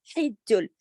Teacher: حج ہا کو حلق سے پڑھا آپ نے ، حج جیم پہ تشدید ہے، دونوں کو سختی سے جوڑا، · حج جیم پہ تشدید ہے، دونوں کو سختی سے جوڑا، ملا کے پڑھا